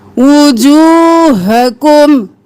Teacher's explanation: अब ना हकुम करेंगे ना खुकुम करेंगे, यहाँ पर हम सीने की तरफ से निकालेंगे